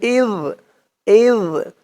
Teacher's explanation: জালের উচ্চারণটা একদম নরম পাতলা হবে জিহ্বার মাথা উপরের দাঁতের মাথার সাথে লাগবে